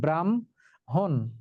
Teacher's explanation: উচ্চারণের সময় উল্টে যায়, আগে ম উচ্চারিত হয় পরে হ উচ্চারিত হয়। যেমন এই যে দেখো, ব্রাহ্মণ, ব্রাহ্মণ শব্দটি উচ্চারিত হয়েছে ব্রাহ্মণ, যুক্ত বর্ণে আছে হ এবং ম, কিন্তু উচ্চারিত হবে ম এবং হ, ব্রাহ্মণ। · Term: যুক্ত ব্যঞ্জন